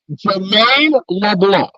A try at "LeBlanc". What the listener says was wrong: You're not pronunciating the C at all.